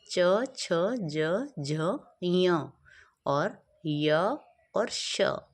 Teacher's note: ये सारे वर्ण हैं जो हमारे बोले जाते हैं तालु से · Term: च वर्ग